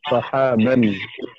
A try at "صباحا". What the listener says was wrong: সহাবান কেন হবে ভাই? এখানে বা কি আগে না পড়ে? সবাহান।